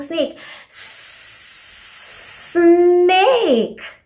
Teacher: the s is a sustained sound